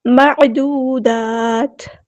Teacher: تنوین کے بعد میم آیا، ادغام مع الغنہ ہو رہا ہے، یعنی ادغام کامل